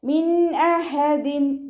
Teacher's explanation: നൂൻ സാക്കിനയ്ക്ക് ശേഷം ഇവ്ഹാറിൻ്റെ അക്ഷരമായിട്ടുള്ള ഹംസ വന്നു. നൂൻ സാക്കിനയെ വ്യക്തമാക്കി മണിക്കാതെ ഉച്ചരിക്കുക.